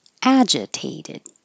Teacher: Tay gets a little longer for secondary stress, but the ag is the primary.